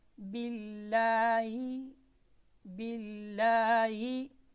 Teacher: लफ्ज़ अल-जलाला से पहले ज़ेर हो तो लफ्ज़ अल-जलाला में जो लाम है ये बारीक पढ़ा जाएगा। बिल्लाही, बिल्लाही, बाज़े लाम, बिल, लाम खरी ज़बर मद, ला, हाज़िर ही, बिल्लाही।